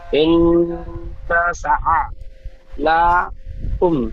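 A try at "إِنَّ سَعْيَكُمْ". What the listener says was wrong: ইন্না সা আ আ হবে না, আ হলে আইন যাবার আ হয়ে যাচ্ছে, কিন্তু আইনের উপর সাকিন আছে। সিন আইন যাবার সা।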